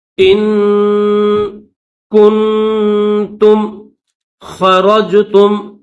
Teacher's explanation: خوا کو موٹا کریں گے، را کو بھی موٹا کریں گے ، را کو جیم کے ساتھ ملائیں گے، خرجتم جہادا فی